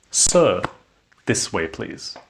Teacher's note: I am saying sir with a rising intonation to capture his attention.